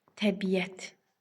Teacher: iki qoşa saitin ortasına bir dənə Y samiti əlavə olunur. Biz də buna səs artımı deyirik.